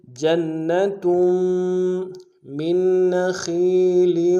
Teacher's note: تا کے تنوین کو غنہ کرتے ہوئے میم کے ساتھ ملانا ہے ، میم کے اوپر تشدید زور دیں گے، جنتم من نخیل،